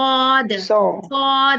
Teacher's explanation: ये सौद पे होंठ गोल नहीं करने हैं